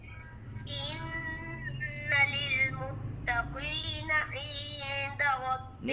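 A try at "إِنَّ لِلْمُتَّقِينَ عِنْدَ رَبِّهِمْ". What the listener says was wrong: متقین نہیں کرتے ہوتے. جی جب قاف کے نیچے زیر آ جائے تو اس کو اتنا موٹا نہیں پڑھتے جب کہ اس کے اوپر زبر ہو جیسے پڑھتے ہیں. اس کی موٹائی میں تھوڑا سا فرق آ جاتا ہے. ان للمتقین متقین.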